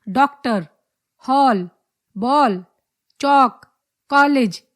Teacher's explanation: यह आ और औ के बीच की ध्वनि है, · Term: आगत स्वर